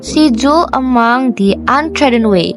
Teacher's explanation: She is unstressed, dwell is stressed, is unstressed, and mong is stressed. So the pattern will be da-dum, da-dum, da-dum, da-dum. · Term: iambic tetrameter